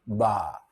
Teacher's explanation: you can feel your vibrations before very very very shortly before your lips release